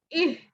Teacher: अब यहाँ पे ई की आवाज अलग होनी चाहिए और हा की आवाज अलग होनी चाहिए। इह, हमजा हा जेर इह, दा जेर दी, इह दी, इह दी, नून अलिफ जबर ना।